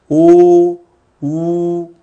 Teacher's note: 다음 두 번째, 입술 모양에 따라 분류를 하면 오, 우 이렇게 오모음이나 우모음이 들어가면 입술을 둥그렇게 낸다 해서 원순모음이라고 부르고